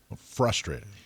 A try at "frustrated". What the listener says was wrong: It's not frustrated. Frustrated. There's an R in there. The R isn't silent.